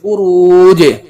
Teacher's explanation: کہ قلقلہ کے 5 حرفوں میں جیم آیا ہوا ہے اور اس کا مخرج ٹکر کھا کر الگ ہو گیا اس لیے یہاں ایک لوٹ کی آواز سنائی دے گی